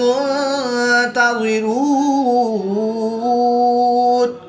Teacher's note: واو مدہ کے بعد نون کی زبر کو وقف کی حالت میں ساکن کریں گے تو یہاں پر مد عارض ہوگی، 2 سے 3 الف تک کھینچ کر پڑھیں گے